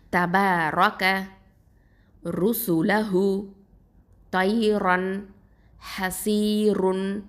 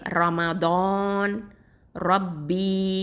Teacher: அதாவது ரா அப்படிங்கிற இந்த எழுத்துக்கு மேலே ஃபத்ஹா, அப்புறம் தம்மா, அப்புறம் ஃபத்தத்தைன், அப்புறம் தொம்மத்தைன், இதெல்லாம் இருந்துச்சுன்னு வச்சுக்கோங்களேன், கண்டிப்பாக அந்த ராவை வந்து நம்ம வல்லினமாக தஃப்ஹீமாக தான் ஓதணும்